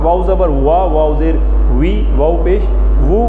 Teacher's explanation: ہونٹ گول ہو کے کھلتے ہیں